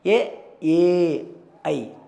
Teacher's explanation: ಇವು ಕುತ್ತಿಗೆ ಮತ್ತು ದವಡೆ ಎರಡು ಸಹಾಯದಿಂದ ಉಚ್ಚಾರಣೆಗೆ ಒಳಗಾಗುತ್ತವೆ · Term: ಕಂಠ ತಾಲವ್ಯ